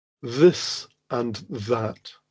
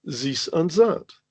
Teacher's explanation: their unconscious mind converts it into the sounds of French, and they hear Zis and Zat.